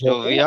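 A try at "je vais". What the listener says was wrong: জোভে, not ভিয়া, এগুলো confuse করে ফেলবেন না।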